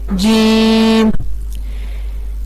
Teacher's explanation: جیم کا مخرج ہے وسط زبان اور بالمقابل اوپر کا تالو